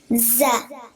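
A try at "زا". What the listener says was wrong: Close. There's an alif at the end. First you say z, and then the alif sound that makes it longer. Za.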